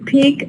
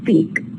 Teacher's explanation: In peak it is aspirated because it occurs initially, whereas in speak it's not aspirated because it occurs after the S. And it's neither final nor initial.